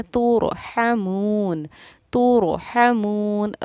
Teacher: رائے ساکنہ سے پہلے پیش تھا تو ہم نے را کو پر پڑھا، پر یعنی کہ منہ بھر کے پڑھا · ہا کی ادائیگی کو حلق سے ہمیں ظاہر کرنا ہے